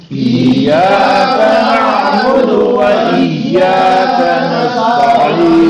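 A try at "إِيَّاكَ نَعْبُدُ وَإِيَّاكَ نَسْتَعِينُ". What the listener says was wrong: سین باریک ہو اور عین واضح ہو، اور حمزی ابھی بھی درست نہیں ہے. ایاک نعبد و ایاک نستعین.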